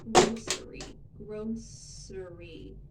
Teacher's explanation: There's two different pronunciations for this, and it's just a regional difference or a personal preference. You can say grocery with an S sound in the middle.